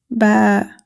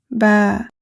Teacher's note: The articulation of ba is produced by closing both lips together, then releasing them with voice.